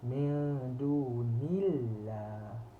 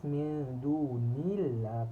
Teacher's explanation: So bila baris bawah Allah ini ataupun lam dekat kalimah Allah itu kena dibaca nipis